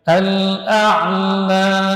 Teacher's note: Ala tidak boleh tertahan ee suaranya la tidak boleh tertahan seperti itu. Karena alif mad sifatnya rakhawah dia mengalir